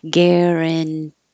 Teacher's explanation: your voice is on then off then on because it stays a t because it's in the stressed syllable